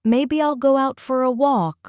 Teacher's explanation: Let your voice rise slightly on walk